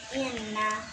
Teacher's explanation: nun tasdid 3 harokat. Dengung 3 harokat bacanya. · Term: gunnah musyaddadah